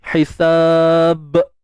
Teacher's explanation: Ba ni bibir kan, huruf bibir, syafatain. Jadi kena jelas kat situ.